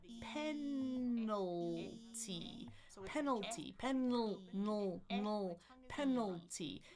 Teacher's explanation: I kind of hear a vowel between that N and the L." If you do, it's this one that we call schwah, right?